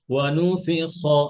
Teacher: তাহলে খ এর মধ্যে রখাওয়া আছে, আওয়াজটা চলবে · খয়ের মাখরাজ হচ্ছে হলকের শেষ হইতে।